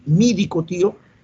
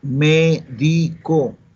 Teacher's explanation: le cambió la E por la I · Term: dialecto fonético